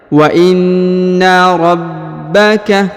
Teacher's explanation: Perhatikan huruf na ditahan ya dan ditekan karena terdapat tanda tasdid ya.